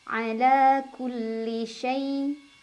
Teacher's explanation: ada huruf lin karena ada ya sukun sebelumnya fathah, dibacanya cukup dilunakan.